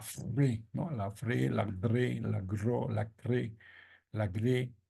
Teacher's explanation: Esos sonidos son fricativos porque son sonidos que se pronuncian vibrando, y eso a veces es bien difícil de conseguir.